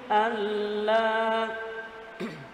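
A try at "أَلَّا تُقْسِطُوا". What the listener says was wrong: Allah, ya, harus dibaca panjang, ya. Allah tuqsitu, ya. Allah tuqsitu, ya.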